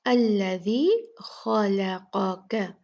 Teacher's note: الذی خلقک، خا جو ہے یہ پر پڑھا جانے والا حرف ہے، مفخم ہے۔ لام جو ہے وہ مرقق یعنی لائٹ پڑھا جاتا ہے، باریک پڑھا جاتا ہے۔ قاف پھر مفخم یعنی موٹا حرف، اور پھر کاف جو ہے وہ لائٹ پڑھا جاتا ہے، باریک پڑھا جاتا ہے۔ · قاف پھر مفخم یعنی موٹا حرف، اور پھر کاف جو ہے وہ لائٹ پڑھا جاتا ہے، باریک پڑھا جاتا ہے۔ تو ایک بھاری ایک باریک ایک بھاری ایک باریک، یہاں پر ایسے ترتیب ہے الفاظ کی۔